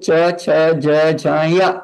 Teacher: ऐसे बोलते समय आपकी जिव्हा जहां स्पर्श कर रही है वो है तालु स्थान